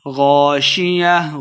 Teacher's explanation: غین کو موٹا پڑھنا ہے